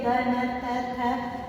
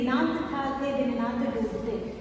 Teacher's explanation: द, न, त, थ, ये सभी जबान जो है दांत से छुएगी। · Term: दंत्य